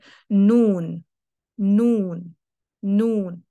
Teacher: नाक भी हरकत में आता है और नाक से भी आवाज़ जा रही होती है नून नून दबाकर इसमें शॉर्ट साउंड रहती है मतलब इसके अंदर